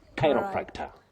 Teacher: The stress is right at the beginning